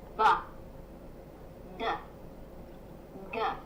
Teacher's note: That vibration is caused by the vocal cords in your throat moving or vibrating, so you feel that vibration on your hand. These are called voiced sounds because your voice is on.